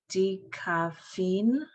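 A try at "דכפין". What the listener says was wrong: It's two syllables.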